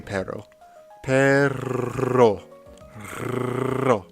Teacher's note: And then you just kind of put a little pressure on it, like on the tip of your tongue, you just flick it up and have it bounce off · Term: roll your R's